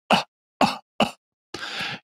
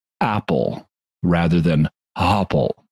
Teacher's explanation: the sound of a glottal stop, where you pinch off the airflow coming through your throat